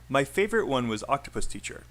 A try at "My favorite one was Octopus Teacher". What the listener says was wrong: A little bit faster on Octopus Teacher.